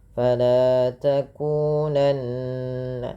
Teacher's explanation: Fala mad tabi'i, lanya 2 harakat. Takunanna, nun berharakat tasydid, dibaca dengan gunnah. Cara membacanya dengan menahan bunyi suaranya. Fala takunanna, ditahan.